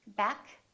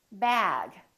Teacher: We have K and we have G. K is voiceless, G is voiced.